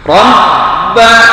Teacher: Ya'budu, du-nya disebut mad asli karena dhammah menghadapi waw sukun. Rabba, ba-nya ditahan dulu, jangan langsung karena ba-nya di tasdid, ya, setiap huruf yang pakai tasdid itu maka harus ditahan.